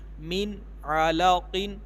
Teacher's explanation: نون ساکن کے بعد عین آ رہا ہے، حروف حلقی میں سے ہے، اس میں بھی غنہ نہیں کریں گے